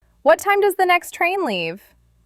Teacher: Remember, curious tone, short and clear, rising intonation.